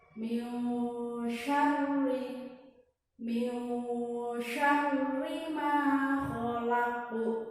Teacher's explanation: Cara membacanya yaitu samar-samar, yaitu antara dengung dan jelas. Jadi kita dari jelas menuju ke dengung, ya. Jadi persiapan nanti di mimnya itu kita udah persiapan menuju huruf ini shin.